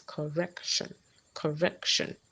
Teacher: In a word like correction, the second syllable is stressed.